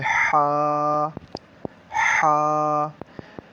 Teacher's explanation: یہ حلق کے درمیان والے حصے سے ادا ہوتا ہے